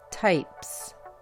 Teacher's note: Con la palabra types, la S no se pronuncia como la Z, sino como la S